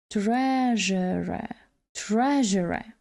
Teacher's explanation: наголос на першому складі